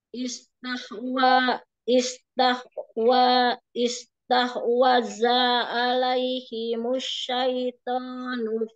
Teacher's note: Wanya nggak panjang, diulang.